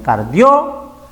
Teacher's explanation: La O tiene mayor intensidad, mayor fuerza. Forma diptongo.